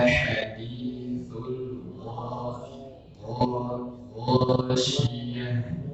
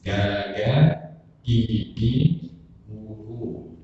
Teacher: Ini huruf G. Tapi kalau ghain dia harus dibaca lebih tebal dari huruf G bahasa Indonesia.